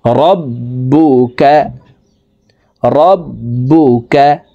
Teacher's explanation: বার উপরে তাসদিদ আছে, তাই আমরা এই বা হরফকে দুইবার উচ্চারণ করে পড়ব, একবার পূর্বের হরকতের সঙ্গে আরেকবার নিজ হরকতের উচ্চারণ হবে।